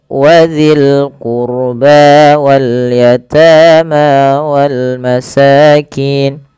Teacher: tebalkan rnya karena huruf ro sukun